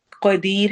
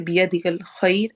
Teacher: या साकिन के आने की वजह से रॉ बारीक पढ़ा जाता है वक्फ करते हुए